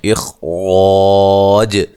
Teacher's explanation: اخ، خا کو موٹا ادا کرنا ہے، را کو موٹا، الف مدہ ہے تو وقف کی صورت میں جیم ساکن ہو جائے گی، تو وقف کی صورت میں آپ مد کے ساتھ وقف کر سکتے ہیں۔ اخراج، جیم پہ قلقلہ کرنا ہے۔